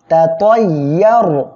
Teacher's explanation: ইয়া র জবর ইয়ার, র সাকিন তার ডাইনে দেখেন জবর আসছে, মোটা করে পড়বেন